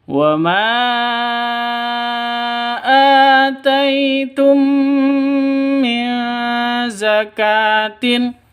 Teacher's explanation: Panjang 2 ketukan karena ada tanda berdiri di atasnya alif, di atasnya hamzahnya, ya, fathah berdiri. Ataitum, tai sifat lin, lentur, lemes, tidak boleh sentak, tidak boleh didengungkan.